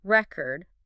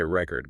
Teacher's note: If you stress the first syllable, record, that's a noun, right? Like a vinyl record.